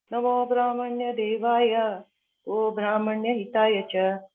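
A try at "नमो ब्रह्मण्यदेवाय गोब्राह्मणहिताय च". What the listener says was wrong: Tell slowly na. Why you run like this? Tell nicely, smoothly na.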